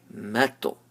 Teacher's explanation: Now mim is empty mouth and ta is full mouth. So you have to blend it from empty mouth to full mouth. مَطْ. It's not moto, but it's مَطْ.